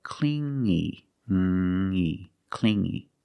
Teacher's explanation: You hear the sound only the nasal sound here, no G